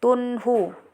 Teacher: Lanjut, kemudian di sini ada juga hukum izhar halqi karena tanwin bertemu dengan ha jadi dibaca jelas tanpa dengung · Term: izar halqi